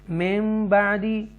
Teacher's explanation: ये इकलाब है क्योंकि नून साकिना के बाद बा आ रहा है और इसलिए मीम आ जाता है